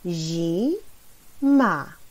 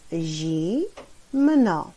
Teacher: przy pierwszej sylabie zi jest bardzo wyraźnie słyszalne i